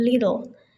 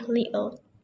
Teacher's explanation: kata little bisa diucapkan dengan T, jadi little. Atau pakai glottal stop jadi little.